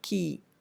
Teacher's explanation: The k sound here changes under the influence of the e sound, and k is not a fully velar sound as it normally is or by itself is, and it becomes a more of a pre-velar sound under the influence of the e vowel sound that comes after it. So within the word you find the assimilation occurring in the production of the k sound.